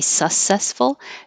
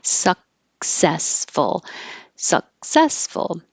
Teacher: to stop the airflow you can't skip it and say successful you have to go to the K position suck like you're going to say suck